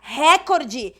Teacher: quem pronuncia Record Está transformando a palavra em proparoxítona mas ela não tem acento